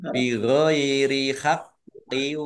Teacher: qafnya dibaca double ada tasdidnya ditekan biar tampak doublenya